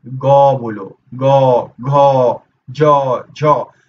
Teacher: ये सब बोलोगे ना तो गले में कंपन होती है। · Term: घोष